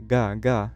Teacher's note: in Egypt Jim is pronounced with the back of the tongue